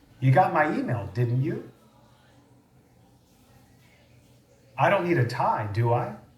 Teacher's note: listen to these examples of tag questions with rising intonation